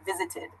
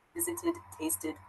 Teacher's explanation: So it has an ID sort of pronunciation at the end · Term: ID sound